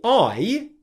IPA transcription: aɪ